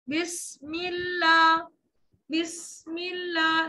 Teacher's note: نہیں، بی کی آواز، ٹھیک ہے، بس نہیں، بس، بسم اللہ، سین کے سیٹی ہمس کی صفت، سانس جاری رہے گی، آواز رک جائے گی